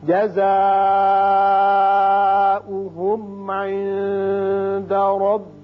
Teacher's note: جزاؤہم یہاں مد متصل ہے، 5 حرکات کھینچیے. میم پر اظہار ہوگا، اظہار شفوی.